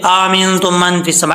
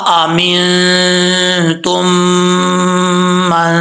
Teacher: اب یہاں پر اس کو کلیئر کر کے پڑھنا ہے. ایسا نہیں پڑھنا کہ دوسرا حمزہ جو ہے وہ اس کی آواز ہی نہ آئے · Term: دو حمزے